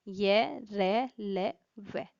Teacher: इन व्यंजनों के उच्चारण में जीवा का पूरा स्पर्श मुख के किसी विशेष भाग के साथ नहीं होता है। मतलब जब इनको उच्चारण किया जाता है, जो हमारी जीभ होती है, जो जीभ होती है उसका जो पूरा स्पर्श होता है वो मुख के मतलब किसी एक विशेष भाग के साथ नहीं होता है। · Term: अंतस्थ व्यंजन